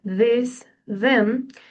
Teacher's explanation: The use of a D sound instead of a TH sound